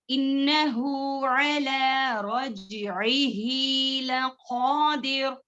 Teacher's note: انہو ہو 2 حرکات کے برابر کھینچنا ہے.